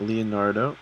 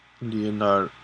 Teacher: Leonardo, I think, is how it's pronounced, with emphasis on the last syllable